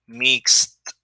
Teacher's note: So in this case it's mix. And the S doesn't vibrate, right? So in this case is mixed. It's unvoiced. So you say mixed.